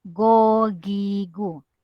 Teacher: apabila kita sebut gogigo dia akan bergema di kerongkongan paling atas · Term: huruf go